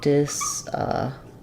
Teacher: in the word disappointed, we stress on the point syllable. And I can either say disappointed with a T, like with wanted, or disappointed.